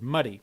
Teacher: there are several types one type is a tap which involves a rapid movement of the tongue tip kind of like an extremely short stop